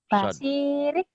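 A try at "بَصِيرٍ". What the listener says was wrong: Kok basirik sih? Jangan basirik. Basirik direm, jangan ada kaknya.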